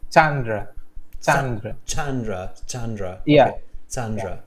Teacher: so it's an emphasis on the first syllable